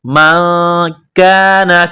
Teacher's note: نون ساکن پر غنہ کریں گے، آواز ناک میں چھپائیں گے۔ من کان، کاف کو باریک کرنا ہے۔